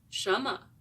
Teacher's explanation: the m in 什 么 is barely heard. Because of the overpowering tone of the first syllable, the second one is of the neutral tone.